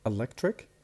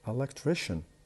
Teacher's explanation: the stress is will move to the third syllable, the one before the last